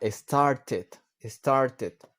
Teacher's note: para start, ¿qué es lo que hacemos? Agregarle una sílaba extra.